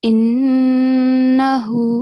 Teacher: So when you make a double sound, when you stress on Noon, also make sure that you are making nasal sound. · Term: Noon, Mushaddad